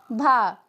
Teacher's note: घोष भी है और महाप्राण भी है और ओष्ठ व्यंजन भी है